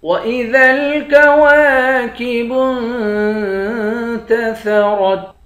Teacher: واو کے بعد الف ہے، الف حروف مدہ ہے، 1 الف کی مقدار کھینچیں گے۔ با کو نون کے ساتھ ملا کر نون پر اخفا کریں گے۔